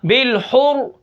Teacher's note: بالحر را موٹی ہو جائے گی، اس زیر کا لحاظ نہیں کرنا